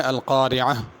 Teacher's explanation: اگر القارعہ پہ رکنا ہو تو ہا پڑھنی ہے